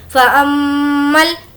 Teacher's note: मीम पर तजदीद है इसीलिए गुन्ना करेंगे